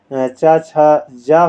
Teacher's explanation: स्पर्श संघर्षी व्यंजन आपका होता है च वाली लाइन में जो होते हैं